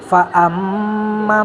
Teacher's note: mim musyaddadah 2,5 sampai 3 harokat ditekan atau ditahan